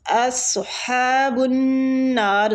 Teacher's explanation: سواد کو اس کے پورے رخاوے کے ساتھ پڑھیں گے، پورا حروف ہے ٹھیک ہے مستعلیہ۔